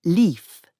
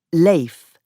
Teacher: in Chaucer's time, the word for life was pronounced leaf, and this became leif, and then life by the 18th century.